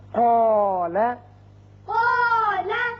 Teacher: جیسے قاف حروف مستعلیہ میں سے ہے، پر پڑھا جاتا ہے